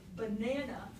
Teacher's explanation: the stress in banana is on the second syllable